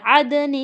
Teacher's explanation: یہاں پہ دیکھیں دال قلقلہ کریں گے, دال کے اوپر ساکین ہے, دال کو ہلائیں گے. عدن نون کے نیچے تنوین ہے, تنوین کے بعد تا آ گیا, حروف اخفا میں سے تا آ گیا یعنی ہم یہاں پہ اخفا کریں گے, تنوین کے بعد ناک میں چھپائیں گے.